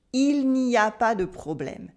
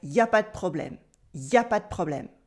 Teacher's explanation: The negative N here disappears and we cut letters when we can. If you pronounced all the letters here, it would sound weird and a bit too formal.